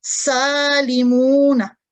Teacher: سین مرکک ہے یعنی اس کی آواز کو باریکی سے ادا کریں گے